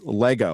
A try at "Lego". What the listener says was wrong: not Lego. There's no Laygo. Leg. Leg. leg. My leg.